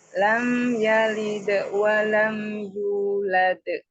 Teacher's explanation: Yulad kurang panjang, kurang tabi'i.